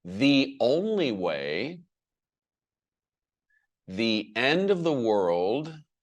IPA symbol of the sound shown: ðiː